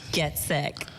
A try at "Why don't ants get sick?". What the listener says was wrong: You won't report and you're telling a joke. You sound like you're reporting. Get sick.